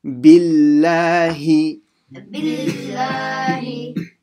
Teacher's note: you have to make sure you say both the kasra sounds, so the B and the he